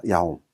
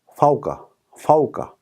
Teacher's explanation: 앞에 아모음이 있고 그 다음에 와우의 스쿤인 경우 이런 모습을 형성이 되면 그게 이중모음을 형성하고 있는 겁니다